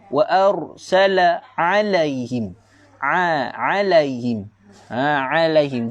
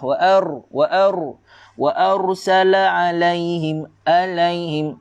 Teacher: Huruf ain jangan baca dengan huruf hamzah.